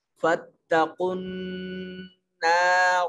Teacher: قاف کو براہ راست نون سے ملائیں گے اور نون مشدد ہے، غنہ واجب ہوگا۔ مطلب یہ کہ نون کی ادائیگی کے وقت آواز کو ناک کے نتنوں میں لے جا کر گنگنائیں گے